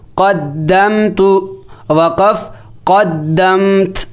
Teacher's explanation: وقف کی صورت میں تا کو ساکن کر دیا جائے گا